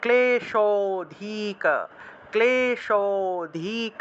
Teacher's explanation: ক্লেশ শতে গিয়ে একটু টান দিলে একটা অটোমেটিক একটা অ এর মতো একটা উচ্চারণ আসে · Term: লুপ্ত অ